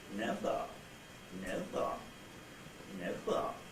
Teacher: where you have the nuclear syllable itself rising to a high pitch from a mid-level pitch, or midish pitch, or a bit lower than that, and then the tail syllable is low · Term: rise fall